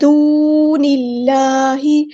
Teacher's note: نون کو ہم نے لام کے ساتھ ملا دینا ہے، حمزۃ الوصل ہمارا ڈراپ ہو جائے گا ، اللہ کا جو لام ہے یہاں پہ باریک پڑھیں گے